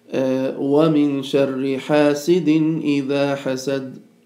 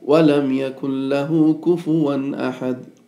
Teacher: you recite the tanween with no delay, no ghunna, no nasal sound and anything like that. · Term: idhar